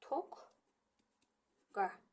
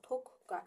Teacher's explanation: Birinci deməli q çevrilir k-ya. İkinci q olduğu kimi qalır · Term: qoşa Q